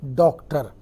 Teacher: आ और ओ के बीच की एक ध्वनि है